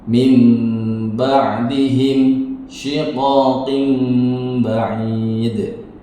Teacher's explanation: Keterangannya, apabila ada nun sukun atau tanwin bertemu dengan huruf ba, maka suara nun sukun atau tanwin ditukar dengan suara mim dan harus dibaca dengung. Min ba'dihim menjadi mim ya, nunnya menjadi mim.